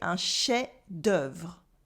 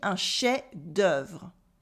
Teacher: the F disappears. We say un chef-d'œuvre.